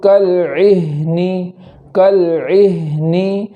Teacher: ہا میں آواز جاری کرتے ہوئے پڑھیں گے